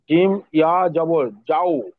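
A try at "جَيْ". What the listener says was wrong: যাই। ওইকার হবে তো, ইয়া থাকলে তো ওইকার উচ্চারণ হয়।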